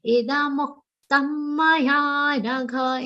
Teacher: In this particular charan, only ya is a long sound. So do not make e or mu long. That is one mistake that happens in this charan.